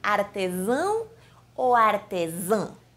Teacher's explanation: E em feminino diríamos artesã. A variação está na nasalização, gente.